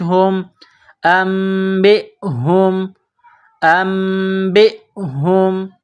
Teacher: با حمزہ زیر بی، ام بی، ہا میم پیش ہم، یہ گول ہا ہے چشمے والی، منہ سے صرف ہوا نکالنے کی طرح اس کو پڑھتے ہیں۔ ہا کو میم کے ساتھ پلس کرنا ہے۔